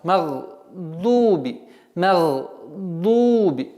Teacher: Вот здесь у нас произношение в размере двух огласовок. Удлиняем дамму.